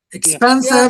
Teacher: The second the second syllable is stressed.